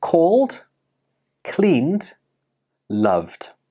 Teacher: So, did you hear a soft da sound at the end of these words? Even though these words are spelt with an ed, they do not end with an id sound. Instead, they end with the da sound. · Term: da ending sound